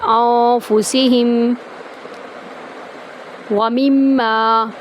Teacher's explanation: یہاں پر بھی ہم میم کو میم میں داخل کرتے ہوئے غنہ کریں گے اور میم کو ایک الف کے برابر لمبا کریں گے۔